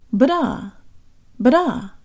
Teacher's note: the D in da is practically the same thing as a flipped Russian er.